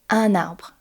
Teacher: We do this because the sound following is a vowel sound, an open a for arbre